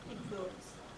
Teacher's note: There's the word influence, has the first syllable stress, always regardless of whether it is used as a noun or verb.